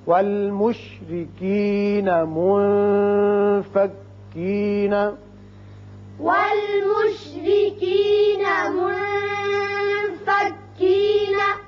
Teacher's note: منفکین نون ساکن کے بعد فا جو کہ حروف اخفا میں سے ہے، لہذا یہاں اخفا کریں گے